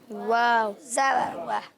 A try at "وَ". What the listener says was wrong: یہ ہے غلط. ایسے نہیں پڑھتا، واو زبر وا نہیں ہوتا. ہونٹ گول کرنے ہیں مکمل، باہر کی طرف نکالیں. واو زبر وا.